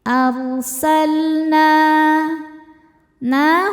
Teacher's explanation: Arsalna na hukumnya mad thobi'i zohiri sebab ada alif sebelumnya fathah. Cara bacanya panjang dua harakat.